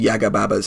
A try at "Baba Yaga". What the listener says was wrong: Baba Yaga, Yeah, it's Baba Yaga. You said Yaga Baba.